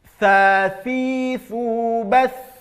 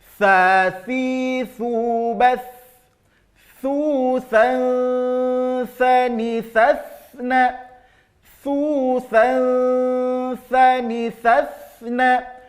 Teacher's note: ujung lidah akan keluar sedikit dari batas gigi kita, seperti menggigit ujung lidah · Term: huruf tha